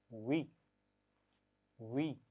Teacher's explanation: वाव के लिए ख्याल रखना है कि दांतों का इस्तेमाल नहीं करना, बल्कि होठों को गोल करते पढ़ेंगे